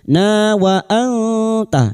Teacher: nun sukun bertemu ta ikhfa hakiki, kita samarkan bunyi nun sukun dan mendengung selama 3 harakat